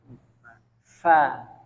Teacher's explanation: Fa itu dia itu gigi seri atas bertemu dengan perut bibir bawah